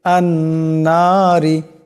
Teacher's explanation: রার নিচে জের আসছে, রাকে পাতলা আওয়াজে পড়তে হবে